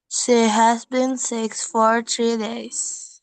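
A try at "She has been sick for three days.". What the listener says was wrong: Tadi three masih bunyinya T. Three. Keluarin dulu ujung lidahnya. Three.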